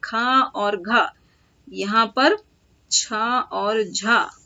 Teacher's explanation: वैसे व्यंजन जिनके उच्चारण में जो वायु की मात्रा है ना वो ज्यादा निकलती है, अल्पप्राण से ज्यादा निकलती है, तो उनको महाप्राण व्यंजन बोला जाता है।